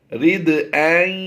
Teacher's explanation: اب یہ الف نہیں ہے، بظاہر یہ الف نظر آ رہا ہے لیکن یہ حمزہ ہی کی آواز دے گا